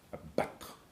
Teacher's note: En attendant de se faire abattre, vous avez une séquence, en fait, d'une labiale occlusive, excusez-moi maintenant un peu du jargon technique, avec une dentale occlusive et ensuite le R final roulé